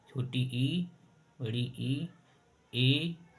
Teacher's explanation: जीव के आगे के भाग से आवाज आती है, अग्र स्वर